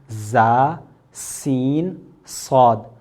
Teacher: حروف صفیریہ، یعنی وہ حروف جن کو ادا کرنے میں سیٹی نکلتی ہے، سیٹی کی آواز آتی ہے